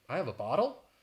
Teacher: you have that rising intonation at the end which would make it a question